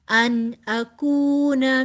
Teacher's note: नून साकिन के बाद आगे हरूफे हल्की में से हमजा आ रहा है, लिहाजा यहाँ पर इजहार होगा